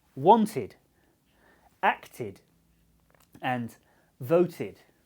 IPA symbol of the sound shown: ɪd